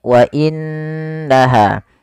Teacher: di sini ada Nun berharakat tasydid Apabila ada nun berharakat tasydid kita hukumi dengan bacaan gunah yaitu suara nunnya kita tahan dengan sepanjang dua harakat wa innaha tidak langsung dibaca WA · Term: gunnah